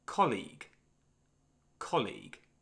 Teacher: So this is a noun and has two syllables. The stress is on the first syllable, colleague.